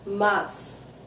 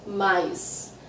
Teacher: In some places of Brazil, we pronounce M-A-S very clearly, mas. But in many places, we say mais.